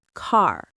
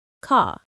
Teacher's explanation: American English often uses strong R sounds, car. British English softens the R, ka.